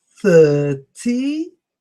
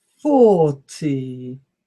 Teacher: there is also the TH that distinguishes the 2 words, th for 30 and f for 40